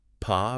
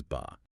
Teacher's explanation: Just a millisecond difference in when the vocal cords start vibrating after you release the air. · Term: voice onset time